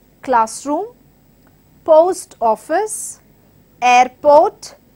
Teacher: Usually the most stressed part of the word in the compound noun is the first word. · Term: syllable stress